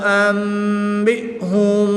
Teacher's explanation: انک انت العلیم الحکیم قال یا آدم انبئهم باسمائهم، یہاں پر مد منفصل ہوگی، نون ساکن میں اقلاب کا قاعدہ ہوگا، نون ساکن کے بعد حرف با آ جائے تو نون ساکن کو میم سے بدل کر اخفا کر کے پڑھیں گے